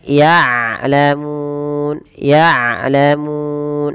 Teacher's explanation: Dan jangan sampai dibaca dengan ya'lamun dengan hamzah, tapi dengan ain. Kemudian balafal mun ada mad arid disukun.